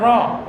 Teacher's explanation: জিব্বার আগার পেট তালুর সঙ্গে লাগিয়ে